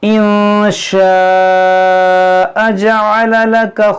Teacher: جو مد ہے مد متصل ہے، اس کو ہم 3-4 الف کے برابر کھینچ کر پڑھیں گے۔ · نون ساکن کے بعد شین ہے، یہاں پر اخفا ہوگا یعنی غنہ کریں گے۔